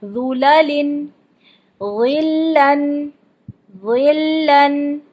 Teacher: ذو کو موٹا کرتے ہوئے لام کو ساتھ ساتھ موٹا نہیں کرنا، صرف ذو ہی موٹا کرنا ہے، لام باریک رہے گا.